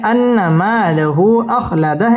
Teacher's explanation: লাহু মধ্যে মুনফাসিল তিন আলিফ টান দিয়ে পড়তে হবে